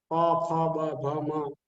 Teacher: ઓષ્ટ્ય બંને હોઠ દ્વારા પ, ફ, બ, ભ, મ એમાં આપણા હોઠ એકબીજાને સ્પર્શ કરે એ ઓષ્ટ્ય છે